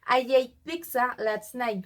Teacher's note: we can tell the intrusive j between i and eight